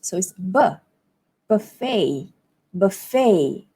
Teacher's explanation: In American English, the vowel is different. So it's buffet, buffet, and stress falls on the fey part.